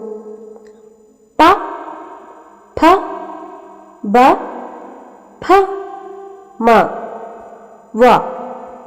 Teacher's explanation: ചുണ്ടിന്റെ സഹായത്തോടുകൂടി ഉച്ചരിക്കുന്ന അക്ഷരങ്ങളെ ഓഷ്ട്യാക്ഷരങ്ങൾ എന്നു പറയുന്നു